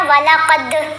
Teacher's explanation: ہم نے دال کی آواز کو ہلا کر پڑھا وَلَقَدْ، وَلَقَدْ ایسے پڑھیں گے تو کلکلا کوئی نہیں ادا ہوا.